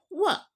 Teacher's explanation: ಹಲ್ಲು ಮತ್ತು ತುಟಿಗಳ ಸಹಾಯದಿಂದ ಹುಟ್ಟುವ ವರ್ಣಗಳು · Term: ದಂತೋಷ್ಠ